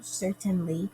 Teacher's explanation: where the first syllable is emphasized and the other two are not. So stressed, unstressed, unstressed. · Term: Dactyl